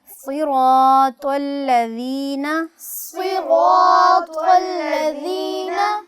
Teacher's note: صاد چونکہ حروف مستعلیہ میں سے ہے اور اس کو آپ تھوڑا سا پر ادا کریں گے اور طا حروف قلقلہ میں سے بھی ہے حروف مستعلیہ میں